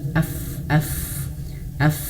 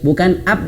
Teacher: Nah, gitu ya. Bukan up, bukan dua bibir yang menyentuh, bukan, tapi af gitu ya